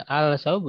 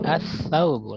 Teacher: Jadi al-saubu jangan, tapi as-saubu lamnya tidak dibaca.